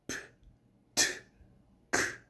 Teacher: 허파에서 올라오는 공기의 흐름을 일단 입안에서 완전히 폐쇄시켰다가 한꺼번에 터뜨려 내보낼 때, 즉 파열시켜 내보낼 때 생기는 음입니다. 그래서 입안에 꽉 모아두어서 폐쇄시켰다고 해서 폐쇄음이라고도 칭합니다. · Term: 파열음